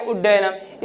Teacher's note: उद्धन डयनम का क्या हो जाएगा, इस द का परिवर्तन ड में हो जाएगा और बन जाएगा उड्डयनम।